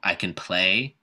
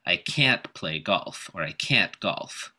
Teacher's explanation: in case of can't to pronounce the vowel fully and stress can't a little bit · pronounce it with a schwa in the middle and stress the next word